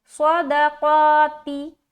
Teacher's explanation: تو یہ جو صدقاتی جو لفظ ہے اس میں پہلا حرف صاد موٹا ہے، دوسرا دال باریک ہے، تیسرا قاف موٹا ہے، چوتھا تا باریک ہے۔ تو اس کو اسی لہجے میں نکالیں گے، موٹا پھر باریک پھر موٹا پھر باریک۔